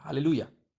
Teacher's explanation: del punto de vista hebreo no se pronuncia, no se vocaliza el último Hei final